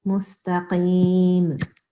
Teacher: So here the ta, this has to be a thick sound, and the qaf has to be a thick sound.